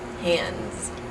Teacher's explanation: you turn the S into a z